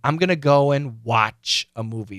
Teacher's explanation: watch is where the focus is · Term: emphasis